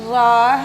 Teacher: जो र है उसका उच्चारण स्थान भी मुर्धा है